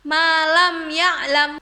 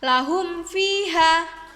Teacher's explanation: Idhar syafawi berbunyi apabila mim sukun bertemu dengan salah satu di antara 26 huruf hijaiyah selain mim dan ba dalam satu kalimat, maka cara membacanya yaitu disuarakan dengan terang dan jelas di bibir serta mulut tertutup